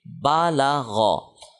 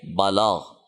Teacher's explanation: اگر یہاں پہ وقف کریں تو غین کا جو زبر ہے یہ جزم میں تبدیل ہوگا، تو پھر اس کو ہم پڑھیں گے بالاغ.